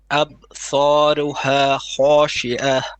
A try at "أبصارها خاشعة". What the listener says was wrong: It's not ab. You have to let go of the ba to make a bit of a qalqala. أبصارها خاشعة. Don't hold it. You're saying no, it's relax. أبصارها خاشعة.